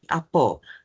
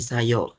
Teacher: vokal A sering berubah menjadi O ataupun e taling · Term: dialek Kelantan